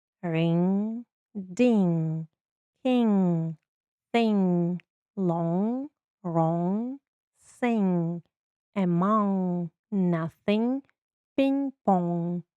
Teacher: Буквосполучення NG дає носовий дзвінкий звук. В українській мові немає такого звука.